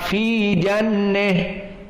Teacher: jika waqaf di jannah, maka imalah al-kubra untuk ha at-ta'nis, maka fi jannah.